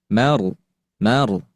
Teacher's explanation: Yaitu dia ada getaran yang di ujung lidah. Mar, mar. Dan ro di sini termasuk ke dalam ro tafkhim atau dibaca tebal, ya. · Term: sifat Takrir, sifat takrir